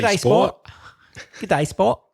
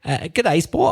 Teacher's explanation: in an Australian accent, by the way, there's even less R sound than in a standard British English accent.